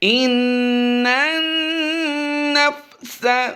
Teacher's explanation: دو بار نون مشدد ہوا ہے، دونوں ہی میں غنہ کریں گے